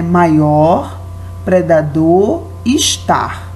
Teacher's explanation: Temos a sílaba mais forte no final de cada palavra, na última